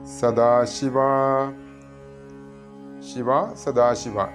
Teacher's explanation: ഇവിടെ ദ ശ്രദ്ധിക്കണം അല്പപ്രാണനാണ് ധ സദാശിവ എന്നൊന്നും ഉച്ചരിക്കരുത്